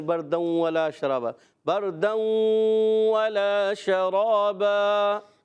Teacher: بردوں میں ایک الف کا غنہ بھی کریں گے